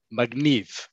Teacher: In modern Hebrew, the compromise was made with Sfaradi Jews, magniv. Okay, the emphasis is on the last syllable